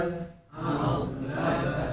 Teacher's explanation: Tebal, pangkal lidah naik.